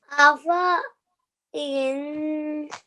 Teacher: you did not prolong the fa for 2 seconds because we are not reading the alif. If we would be reading it, we would be prolonging it for 2 seconds.